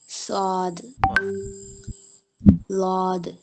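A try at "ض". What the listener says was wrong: ലാദല്ല, ലാ എന്ന് പറയുമ്പോ നാവ് എവിടെ വരുന്നത്? ലാ എന്ന് പറയുമ്പോ നിങ്ങളെ നാവ് എവിടെ വരുന്നത്? പിന്നെ മറ്റേത് പോയിപ്പോ അത് നിങ്ങൾ ഒന്ന് ചെറുതാക്കിയാൽ, അതിന്റെ ശൈലി മാറ്റിയാൽ കിട്ടും.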